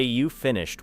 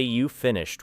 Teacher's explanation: Say you finished with a falling voice, and it may sound like a statement. Then say you finished with a rising voice, and the same words become a question.